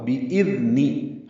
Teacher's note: بِإِذْنِ میں لال نرمی سے پڑھا جائے گا. حمزہ اقصی حلق سے بالجہر ادا ہوگا. بِإِذْنِ حمزہ کی آواز واضح ہو لال نرمی سے.